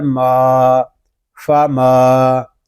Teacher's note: میم کو ہم ایک الف تک کھینچ کر پڑھیں گے کیونکہ یہاں الف مدہ ہو رہا ہے